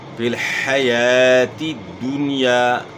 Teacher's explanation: حیا آپ نے پڑھا تو پھر ہا سے تبدیل ہو جائے گی، تو اس سے آپ نے بچنا ہے. ہا کو اپنے مخرج سے ادا کرنا ہے، یعنی گلے کے درمیان سے